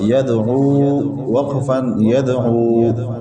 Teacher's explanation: دال اور واو ساکن ہے، ساکن حرف ایک مرتبہ اپنے سے پہلے والے متحرک حرف سے مل کر پڑھا جاتا ہے۔ دال حروف قلقلہ میں سے ہیں، دال پہلے سے ساکن ہے، اس میں قلقلہ کیا۔